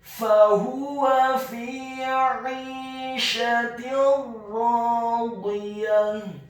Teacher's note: Fahuwa, huruf fa-nya dibaca fathah 1 harokat, huruf ha-nya dibaca tafkhim tebal dhammah 1 harokat, dan huruf waw-nya dibaca fathah 1 harokat.